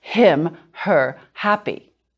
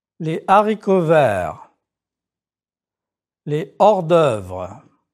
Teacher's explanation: It is called an aspirate H, an H aspiré. Again, you don't pronounce the H sound like in English.